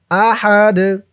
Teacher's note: যখন এই তানবিন সাকিন হয়ে যাবে তখন এই দালটা জজমওয়ালা দাল হয়ে যাবে। জজমলা দাল হওয়ার কারণে এই দালটা কলকলার হরফ হয়ে যাবে। ধাক্কা দিয়ে পড়তে হবে।